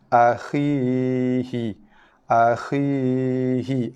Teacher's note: ya dibaca dengan 2 harakat, bunyi nafas laluan yang lalu ke leher naik ke rongga mulut · A, khi, hi satu harakat, ya dibaca dengan 2 harakat. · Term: makhraj jauf ya